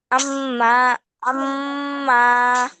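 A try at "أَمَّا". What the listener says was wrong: মা টান দিচ্ছ কেন?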